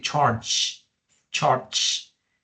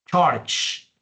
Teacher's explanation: este sonido va con la punta de la lengua detrás de los dientes inferiores y la parte que sigue deja pasar un poquito de aire